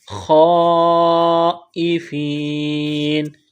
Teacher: خا کو موٹا کرنا ہے ، خائفین، لمبی مد ہے، 4 الف کے لمٹ میں کھینچنا